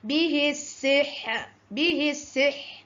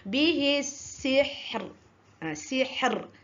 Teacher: ra yang diwakafkan di hujung kalimah kita nak berhenti, hendaklah dibunyikan huruf ra tersebut setengah harkat saja. Kita tak boleh juga bunyikan bihis sihr, bihis sihr.